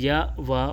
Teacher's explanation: अर्धस्वर के उच्चारण में जिह्वा स्वरों के उच्चारण की तुलना में अधिक ऊपर की ओर उठती है, किंतु इतनी ऊपर तक नहीं पहुंच पाती कि वायु मार्ग अवरुद्ध कर सके। इस तरह इनमें स्वर और व्यंजन के बीच की स्थिति बनती है।